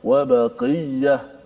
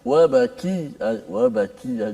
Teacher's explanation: Makhrajnya dekat pada pangkal lidah. Tetapi sifatnya berbeza. Qaf dia agak tebal, kaf dia nipis sedikit. Nipislah sifat dia.